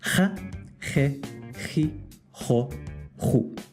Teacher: Neither are quite like in English, but one is much more distinct than the other. In Spain and some Latin American countries, the J is much more kind of guttural or harsh, like a ch. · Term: Jota